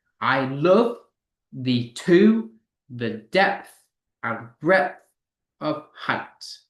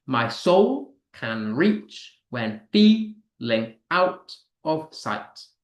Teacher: Pentameter just means five times. So this sonet has used unstressed followed by stress syllables five times.